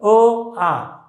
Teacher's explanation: अ आणि आ या दोघांचा उच्चारण स्थान हे एकच आहे. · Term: सजातीय स्वर